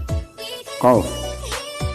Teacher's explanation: Jadi kalau qaf hurufnya di tenggorokan bagian, kalau qaf ada di ujung tenggorokan bagian dalam, kalau kaf ini ada di bagian luar ujung tenggorokan. Kaf hampir sama dengan qaf, cuman kalau qaf lebih mendalam